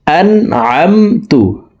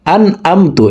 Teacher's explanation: আইনের মাখরাজ হালকের মধ্যখান থেকে হবে তাই আমরা হলকের মধ্যখান থেকে উচ্চারণ করব